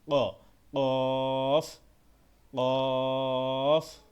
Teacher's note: এই কফটা গলার ভিতর থেকে একটু ধাক্কা দিয়ে উচ্চারণ হবে